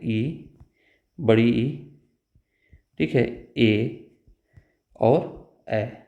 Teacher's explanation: एक होता है अग्र स्वर, जो जिह्वा के अग्रभाग से बोली जाती है